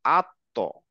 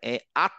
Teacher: হ্যাঁ, তো এটা শিখলাম যে আমাদের দাঁতের গোড়াতে উচ্চারণ হবে, এবং গোড়া থেকে এই আমি মুখটাকে গোল করে উচ্চারণ করব।